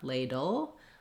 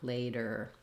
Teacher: L my tongue is lifting in the front Ladle R my tongue is lifting the back later